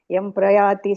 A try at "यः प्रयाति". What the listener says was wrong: ಯ ಪ್ರಯಾತಿ ಅದು ಎಮ್ಮಲ್ಲ ಯ ಪ್ರಯಾತಿ